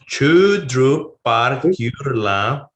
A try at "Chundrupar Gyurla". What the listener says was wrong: Third column, you can do the prenasal. Chundru.